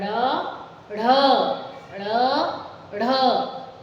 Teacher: जब जीभ पीछे मूर्धा को छूती है पलट के और प्रेशर से बाहर निकालती है, तो हम इन वर्णों का उच्चारण ऐसे कर पाते हैं, ड़, ढ़, ड़, ढ़, और इसको उत्क्षिप्त व्यंजन कहा जाता है।